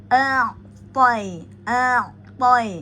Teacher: ujung lidah dengan pangkal gigi seri atas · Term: itbaq